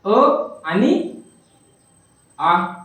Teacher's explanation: आता अ चा गट कोणता आहे, अ आणि आ झाले 2 वर्ण. म्हणजे अ आणि आ हे दोन्ही वर्ण कंठी आहेत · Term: कंठवर्ण